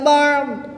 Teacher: 2 زیر کی تنوین کو وقف میں ساکن کر کے پڑھیں گے۔